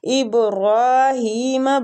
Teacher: را کھڑی زبر کی وجہ سے کھینچیں گے